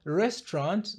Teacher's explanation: tunabananisha herufi T na R na tunaficha A na U. Hivyo inatamkwa restaurant na sio restaurant. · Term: kubananisha herufi